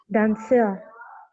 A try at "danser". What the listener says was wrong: Not da, but on.